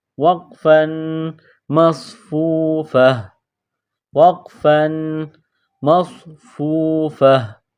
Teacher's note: وقف کی صورت میں گول تا کو ہا سے تبدیل کریں گے